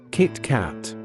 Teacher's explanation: Two syllables, equal weight, a small pause between them.